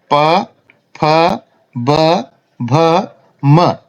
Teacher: जैसे उ, ऊ, प वर्ग पूरा है, प, फ, ब, भ, म, इनका उच्चारण होठों से होता है, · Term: ओष्ठ्याः वर्णः